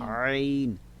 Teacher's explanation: وسط حلق، حلق کا درمیان، یعنی درمیانی گلے سے کون سا حرف ادا ہوتا ہے؟ عین.